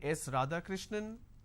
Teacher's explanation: Now, it goes on a rising tone.